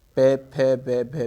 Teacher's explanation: पे, फे, वे, भे में ये होठ मिल रहे हैं तो ये हमारे इसीलिए ओष्ठ से बोले जाएंगे